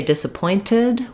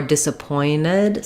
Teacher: So in the word disappointed, we stress on the point syllable. And I can either say disappointed with a T, like with wanted, or disappointed. Sometimes people will drop that T.